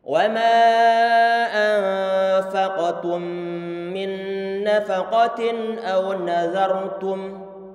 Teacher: Tadi ini adalah contoh terakhir untuk idgham bi gunnah. Nun sukun bertemu dengan nun yang berharokat, sehingga nun yang pertama dimasukkan pada nun yang kedua, sehingga menjadi satu huruf nun yang sama.